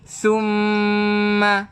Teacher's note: Nun yang bersabdu, mim yang bersabdu. Hukumnya wajib al-gunnah. Wajib untuk kita dengung 2 harakat.